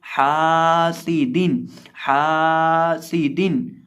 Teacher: हा ज़बर अलिफ हा, सीन ज़ेर सी, हा सी, दाल दो ज़ेर दिन, हा सी दिन। अब यहाँ हम हा को एक अलिफ के बराबर लंबा करके पढ़ेंगे। हा सी दिन, हा सी दिन, हासिदिन नहीं, हासिदिन।